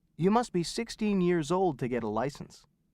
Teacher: note the use of the vowel sound uh in should and must when they are pronounced quickly